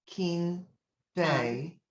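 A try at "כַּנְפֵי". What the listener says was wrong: Kan. See the ah? Kanfe.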